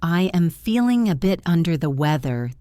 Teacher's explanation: The main stress is on weather and under.